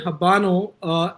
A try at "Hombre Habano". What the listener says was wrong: it's not hombre habano. It's hombre habano. There's no H's pronounced.